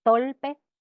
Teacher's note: cambio de la r por l decir tolpe por torpe